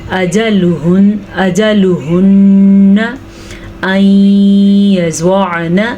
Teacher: یہاں پہ ادغام بالغنہ ہو رہا ہے تو ہم یہاں پہ غنہ کریں گے، اور عین کے تلفظ کا بھی دھیان رکھنا ہے، اور زوات کو پر بھی پڑھنا ہے، نون کو لمبا بھی نہیں کرنا.